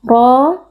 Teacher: Ra huruf tebal dibaca dengan mengangkat pangkal lidah karena ra berharakat fathah. Kemudian ra juga ada mad tabi'i karena ada alif yang sebelumnya berharakat fathah dibaca panjang 2 harakat.